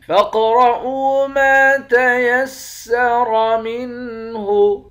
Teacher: قاف کو موٹا بھی پڑھیں گے اور قلقلہ بھی کریں گے، را کو موٹا پڑھیں گے، حمزے کو واو کے ساتھ ملا کر واو کو ایک الف کے مقدار کھینچ کر پڑھیں گے، واو حروف مدہ ہے۔